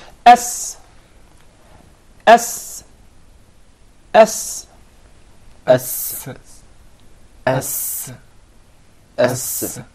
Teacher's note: But in the case of the Sin, you keep it inside. The Sin is articulated from the tip of the tongue in the palates of the 2 front top incisors at a point just above the 2 front lower incisors.